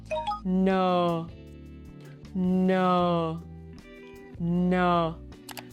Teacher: This is a clear voiced nasal sound.